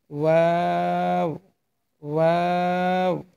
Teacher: এই যে হরফটি হবে ওয়া দুই ঠোট গোল করে উচ্চারণ করবেন।